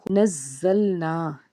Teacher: زا کے اوپر تشدید ہے، زا دو بار پڑھا جائے گا، اور زا جب ادا کریں گے تو سیٹی کی آواز آنی چاہیے۔ اس کے بعد نون الف زبر نا یعنی کہ الف سے پیچھے زبر ہے، ایک الف کے برابر کھینچیں گے۔